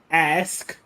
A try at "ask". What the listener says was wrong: Yeah, you hit that K like you really want it to be an X.